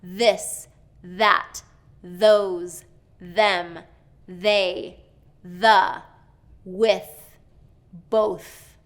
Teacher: that TH sound has to be between the teeth and a little bit outside of the mouth.